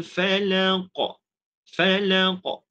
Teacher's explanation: kalau kita waqaf maka secara automatik qaf perlu disukunkan